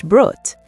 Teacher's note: The double O in brood sounded a bit like OA in broad, but longer.